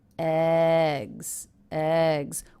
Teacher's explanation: Eggs, eggs, with just a little curve up and then down in the voice.